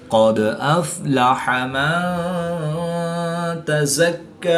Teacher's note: دال ساکن ہے تو یہاں پر قلقلہ صغریٰ کر کے پڑھیں گے